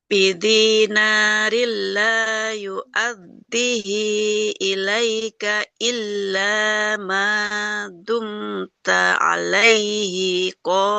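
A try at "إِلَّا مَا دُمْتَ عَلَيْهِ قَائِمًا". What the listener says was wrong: alaihi hanya nggak panjang ya. Illa ma dumta alaihi qa'imah.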